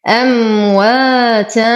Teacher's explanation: تنوين وبعده الفاء فالحكم إخفاء مع غنة مرققة